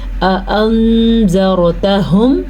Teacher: اخفاء کا قاعدہ ہو رہا ہے، نون کو چھپا کے پڑھیں گے، را کو پر پڑھیں گے